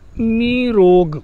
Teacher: तो निह विसर्ग आया और र आया रोग का, तो का विसर्ग हट गया और विसर्ग हट करके जो छोटी नी थी वह बड़ी नी यानी ह्रस्व नी दीर्घ नी में बदल गई